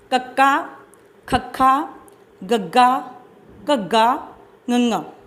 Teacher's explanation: ਇਹਨਾਂ ਵਿਅੰਜਨ ਧੁਨੀਆਂ ਦੇ ਉਚਾਰਨ ਵੇਲੇ ਜੀਭ ਕੋਮਲ ਤਾਲੂ ਨੂੰ ਛੂੰਹਦੀ ਹੈ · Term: ਕੰਠੀ ਵਿਅੰਜਨ ਧੁਨੀਆਂ